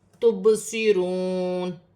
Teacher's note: واو ساکن سے پہلے پیش ہے تو واو مدہ بن رہی ہے، ایک الف کی مقدار کھینچ کر پڑھا جائے گا